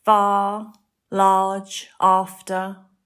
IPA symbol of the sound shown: ɑː